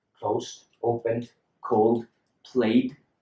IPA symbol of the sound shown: d